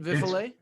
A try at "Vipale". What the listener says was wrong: Kind of close. It's Vipale. Vipale, no F.